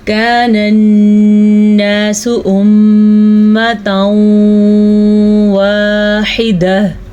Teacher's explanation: کان الناس امتا واحدہ، کان الناس، کاف زبر الف کا، یہ الف مدہ ہے، اسے آپ نے کھینچ کے پڑھنا ہے۔ نون کو نون کے ساتھ جوڑنا ہے کیونکہ یہاں پہ شد ہے، اور شد پہ غنہ کریں گے۔ جب بھی نون پہ شد آ جائے تو غنہ کرنا لازمی ہے۔